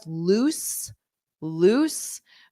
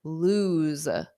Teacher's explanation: loose ends on an S, and then lose z, ends on a voiced sound, a Z